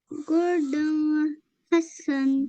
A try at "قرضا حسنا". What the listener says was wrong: نہیں یہاں پہ ہا ہے نا, تھروٹ لیٹر ہے, تو یہاں پہ تنوین کے اوپر ہمیں کھینچنا نہیں ہے. نہیں دون نہیں ہوگا. اور پورا تنوین پڑھ دیں گے ہم. قرضاً حسنا.